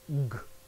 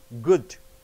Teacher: And in the throat, voiced, G.